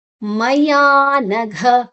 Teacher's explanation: ಮಯಾನಘ ಯಾ ದೀರ್ಘಾಕ್ಷರ, ಘ ಘ ಮಹಾಪ್ರಾಣ ಅಲ್ಲಿ